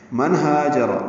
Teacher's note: نون ساکن کے بعد ہا آنے کی وجہ سے اظہار حلقی ہے، ہا دو حرکات لمبا کریں گے، را پر پڑھیں گے.